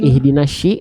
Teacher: huruf syin itu makhrajnya dari Tengah lidah yang diarahkan ke langit-langit lalu dia punya sifat namanya tafasi jadi menyebar udara dari mulut